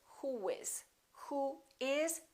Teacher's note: we don't put a little u in there we put a little W sound round your lips